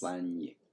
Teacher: it would end up with a geminate palatal nasal